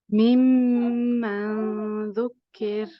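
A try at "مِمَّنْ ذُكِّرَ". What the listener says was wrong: Your ra at the end has a little bit of air. You just want your voice to come through for the ra because it's not a hams letter, it's jahar. Mimma dhukir. The ra can be a little bit lighter than you read, but it's not too bad, alhamdulillah. So you'll see that you hold the mimman and then the madhu, the ikhfa is also, the gunna is longer.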